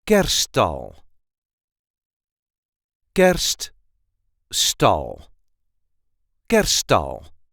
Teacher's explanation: The emphasis is on the first syllable.